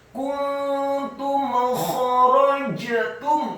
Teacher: kha-nya dibaca tafkhim, tebal dan serak